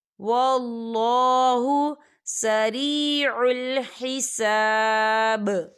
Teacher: تو یہاں پر با جو ہے وہ ساکن ہو جائے گا اور یہاں پر قلقلہ ہوگا